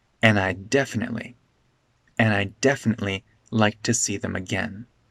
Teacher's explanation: this D in and isn't pronounced, and I'd definitely connects together.